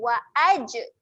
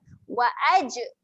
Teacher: Jim ketika mati ada lantunan. Wa aj. Jangan diam.